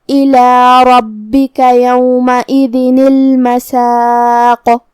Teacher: کلمت المساق کے آخری میں قاف کو ہم ہلاتے ہوئے یہ کلمہ کو پڑھیں گے